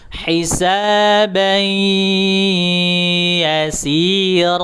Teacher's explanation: setelah dimasukkan ke huruf ya baru baru didengungkan ke arah hidung gitu.